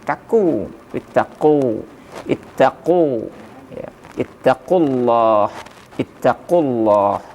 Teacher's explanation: ketika kita melafazkan huruf q itu seolah-olah ada yang apa namanya tertahan ada yang sedikit menyangkut di kerongkong